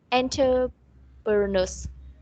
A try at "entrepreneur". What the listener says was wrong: Okay, let's do it slowly. It's not enter, it's entre. Okay, entrepreneur. So actually, you read it entrepreneur. It's entrepreneur. Okay, so take note on this part. Not enter, it's entrepreneur.